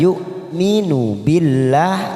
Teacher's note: lam jalalah karena didahului kasroh maka kita baca tarqiq tipis